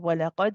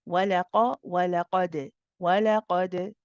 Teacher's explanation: The qaf, of course, is heavy. The dal again is qalqala.